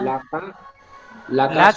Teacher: লাকা কাপে টান হয়ে গেল, কাপে টান হবে না।